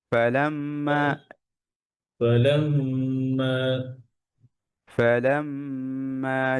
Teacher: মিম শাদ্দা মিম মুশাদ্দা গুন্না